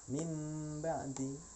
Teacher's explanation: Iklab itu dari kata qalaba yuqallibu, ya, berganti. Bunyi non mati dan tanwin itu berganti menjadi bunyi mim.